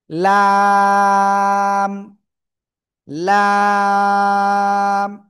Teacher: মাড়ির দাতের গোড়ার সঙ্গে লাগাবো লাগিয়ে আমি এক দুই তিন চার আলিফ টেনে পড়ব